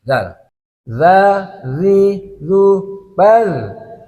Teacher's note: Kita sentuhkan ujung lidah dan ujung dua gigi seri pertama atas. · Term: huruf zal